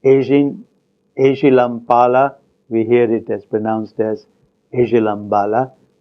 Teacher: a word such as pala is pronounced bala when there is a context that is presented with the nasal before it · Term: rule of voicing